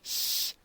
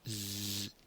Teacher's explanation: we have the s the unvoiced sound and we have z as the voiced sound